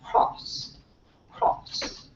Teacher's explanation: it's a low back rounded vowel so your lips are rounded the back of your tongue is high so they would say